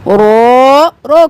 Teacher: رو کھڑی زبر رو ایک الف کے برابر کھینچیں گے